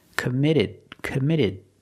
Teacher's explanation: The T in commit is between vowels. So it's a fast D.